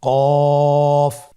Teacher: কফের মাখরাজ হলো জিহ্বার গোড়া তার বরাবর উপরে তালুর সঙ্গে লাগিয়ে উচ্চারিত হয়।